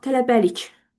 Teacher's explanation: tələbəlik sözündə vurğu hara düşür? Sonuncu hecaya.